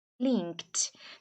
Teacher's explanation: Aqui, tá vendo que antes do E é um K? Então, você não vai falar esse E. Você vai falar a palavra link, né? Link, até o K e depois pular para a pronúncia do D.